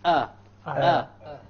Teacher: So the lowermost part of the throat, this is where the hamza originates from.